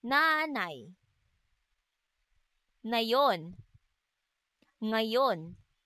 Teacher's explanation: may tunog na isinasaad sa paraan ng pailong at sa punto ng pangipin.